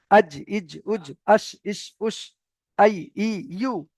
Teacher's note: জিম, শিন, ইয়ার মাখরাজ হলো জিহ্বার মাঝখান ওই সোজা উপরের তালু। জিহ্বার মাঝখান ওই সোজা উপরের তালু।